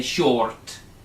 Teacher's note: when it's followed by a consonant it is silent and we don't pronounce the R